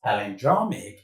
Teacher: You notice when I mentioned that word that the stress falls on the penultimate syllable on the draw. The draw here is the penultimate syllable.